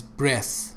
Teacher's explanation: But breath doesn't have any buzzing sound. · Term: voiceless